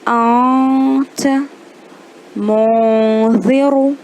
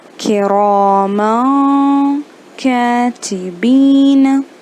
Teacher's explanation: ہم نے یہاں پہ نون ساکن اور تنوین کو کیسے ING ساؤنڈ میں 2 سے 3 سیکنڈ تک کھینچتے ہوئے ادا کیا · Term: اخفا